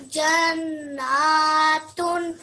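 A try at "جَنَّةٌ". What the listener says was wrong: Yeah, the n sound needs to be a bit longer. So can you hear the n sound? Yeah, that should be for 2 seconds as well.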